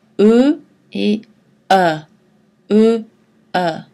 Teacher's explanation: Ces deux voyelles sont identiques, sauf que la bouche est plus ou moins ouverte. Elle est mi-fermée pour E et mi-ouverte pour E. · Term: voyelles moyennes